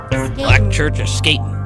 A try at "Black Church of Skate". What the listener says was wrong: Skate, not skating.